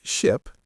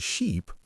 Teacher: >> Second, short versus long vowels. Pay attention to how long you hold the vowel sound. Words like ship and sheep are different because of that length.